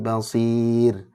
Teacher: Bukan basir ya, tapi basir. Ro-nya tipis, jadi jangan diangkat rahangnya.